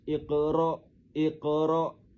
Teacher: Tengok huruf qaf tu dibaca pantul. Dipantulkan bunyinya dengan pantulan yang kecil dan halus. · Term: qalqalah sugra